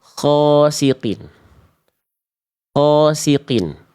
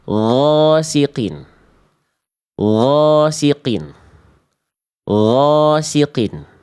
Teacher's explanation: Jangan sampai ghainnya bocor nafasnya. Gak boleh ngalir udara atau angin dalam pelafalan huruf ghain.